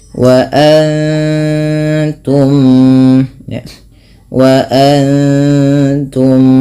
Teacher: Kemudian wa antum, mim mati bertemu mim, yaitu ada bacaan idgham mimi yang dimana suara mimnya ditahan dengan dengan memasukkan yang pertama kepada mim kedua dan ditahan bunyinya sepanjang 2 harakat